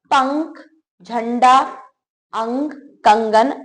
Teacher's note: जिन वर्णों का उच्चारण करने में हवा केवल नाक से निकलती है उसे अनुस्वार कहते हैं